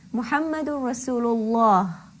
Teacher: I will pronounce Allah with a heavy full mouth. Muhammadur Rasulullah. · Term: lam tafkhim